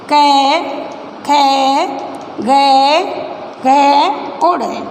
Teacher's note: क वर्ग में। और जब इनका उच्चारण करते हैं तो हमारे मुख के अंतर्गत हमारा जो कंठ है, गला है, वहाँ से वायु जो है होकर निकलती है। तो इनका जो उच्चारण स्थल होता है बच्चों वो कंठे हमारा गला कहलाता है।